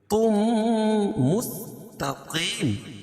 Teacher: تنوین کے بعد ادغام مع غنہ کے 4 حرفوں میں سے میم ہے تو یہاں غنہ کر کے پڑھیں گے. تم مستقیم، قاف کو پور پڑھیں گے، اور وقف کی صورت میں یہ مد عارض وقفی ہوگا، اس میں طول توسط قصر تینوں جائز ہے.